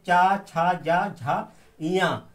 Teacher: और दूसरा हमारा सूत्र है ईचु यासा नाम तालु, इसमें ई से बड़ी छोटी ई बड़ी ई, चा से चा छा जा झा इया, और या सा, ये सब तालु से बोले जाने वाले वर्ण हैं।